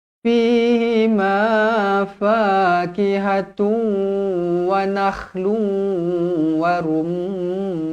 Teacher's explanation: Idam maalunah dengung dua harakat Jadi macam mana cara bacaan dia kita kena muncungkan mulut sebab kita masukkan ke dalam huruf wau